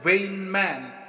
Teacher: Both the syllables are stressed. That means that is not the example of iam but of spondy.